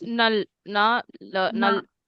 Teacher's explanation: the R sound that we learned has gone in the Pachim, so it will be pronounced as a L sound, right? That's why the mul also does not become mur, but mul, because the R sound has now gone in the Pachim position.